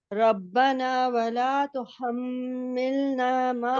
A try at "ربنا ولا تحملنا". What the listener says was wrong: ہونٹ گول نہیں ہو رہے مکمل. ولا لا، یہ مد لیٹر ہے نا، مد لیٹر ہے. آپ جو پیش ہے نا، پیش